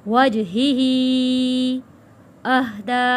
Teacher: جیم حروف کلکلہ ہے، یہاں پہ کلکلہ ادا کرنا ہے